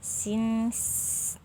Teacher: suara tambahan yang menyerupai suara burung yang keluar antara 2 gigi depan dan ujung lidah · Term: as-safir